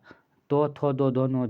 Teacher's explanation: त थ द न जो भी होते हैं ये दांत दांत द्वारा बोले जाते हैं। ये दांत से होता है।